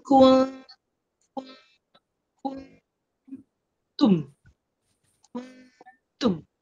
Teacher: Jadi dengung dia tu dengung di belakang huruf ta. Jadi kita dah nak sebut huruf ta.